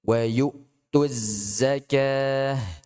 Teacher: Az zai, di sini jangan lupa dia ada shafirnya.